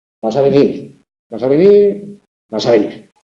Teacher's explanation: Fijaos que la diferencia está en ese venir, es tónico siempre, pero hacia arriba o de salida o hacia abajo, ¿vale? Y ese vas es tónico siempre, pero ese vas a venir, tónico, tónico. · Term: la entonación